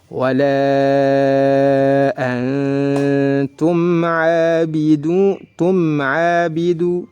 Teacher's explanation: wala antum abidu wala mad jaiz munfasil. Antum nun sukun bertemu dengan huruf ta, maka dibaca ikhfa hakiki, nunnya disamarkan dan ditahan disertai dengan gunnah 2 harakat